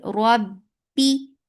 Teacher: Ba will get sifa of shidda. The makhraj will cut off the sound abruptly.